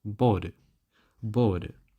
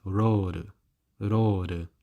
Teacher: In terms of tongue position, it is in between the L and the R. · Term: alveolar flap or tap